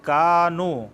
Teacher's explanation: کاف الف مدہ کی وجہ سے کھینچ رہے ہیں